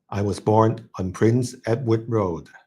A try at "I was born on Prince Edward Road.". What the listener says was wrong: Prince could be a little bit higher, but pretty good already.